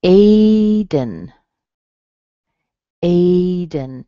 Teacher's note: A is strong, and then dun has a schwa in it.